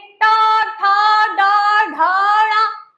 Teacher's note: जीभ अंदर जाती है और फिर ढलक के बाहर आती है है ना ऐ से वायु अंदर जाती आती है और फिर फटाक से बाहर आती है। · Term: मूर्धा